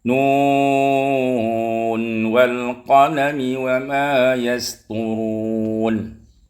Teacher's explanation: ada nun sukun bertemu dengan waw, seharusnya idgham, tapi dibaca dengan izhar mutlaq